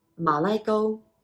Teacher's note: it's a low Rising Ma